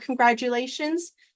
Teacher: sometimes when we say the word congratulations, this T sounds like a D.